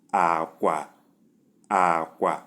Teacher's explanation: Number 4, low and low